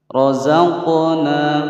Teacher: Di sini ada huruf qaf bersukun ya, kita pantulkan. Ini adalah hukum bacaan qalqalah karena dia huruf qalqalahnya berharokat sukun asli ya dan berada di tengah-tengah kalimat, namanya adalah qalqalah sughra ya.